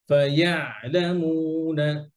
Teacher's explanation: ফাইয়া এটা আইন ছুটবে না আইন ধরে রাখবেন চেপে ধরে রাখবেন